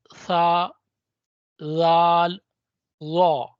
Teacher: उसके बाद आगे आते हैं हरूफ लिसविया। यह जुबान का सिरा और ऊपर के दांतों के अंदरूनी किनारे से निकलते हैं।